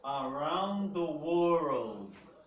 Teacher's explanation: uma frase que contém muito esse R caipira aqui, que é o R mais difícil para nós pronunciarmos